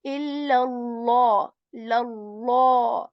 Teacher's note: we are going to make the lam of Allah's word heavy